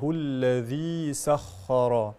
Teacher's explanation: الذي مد طبيعي بمقدار حركتان